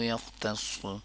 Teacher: خا کو موٹا کر لیں گے، تا کو نہیں موٹا کریں گے